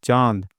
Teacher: चांद मुंह और नाक दोनों से आवाज आ रहा है ना? तो इसीलिए यहां पे चंद्रबिंदु का इस्तेमाल करते हैं।